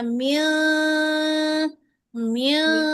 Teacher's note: इख्फा करने के लिए जुबान को पीछे से उठाएंगी, लेकिन तालू पे ना लगे।